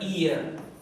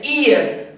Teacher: तो यहाँ पे चूंकि प्रोनाउंसिएशन ई से है, यानी कि इसका साउंड जो है वॉवेल की तरह है, ईयर, यहाँ पे ई से प्रोनाउंसिएशन हो रहा है, यानी कि वॉवेल साउंड हो रहा है, एच का प्रोनाउंसिएशन यहाँ नहीं है